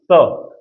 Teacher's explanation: जीभ जो है ना वो ऊपर वाले दांतों के नीचे दब जाती है, तो ये दंत हो जाएगा